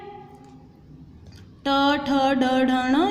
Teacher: ट ठ ड ढ ण, ये मुद्रा है, ये हमारे जो टंग है वो राउंड हो जाती है